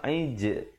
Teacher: Aij ada pantulan di situ khalkhalah dan jim pepeskan, jangan pula jim kita bulatkan aij, tak betul.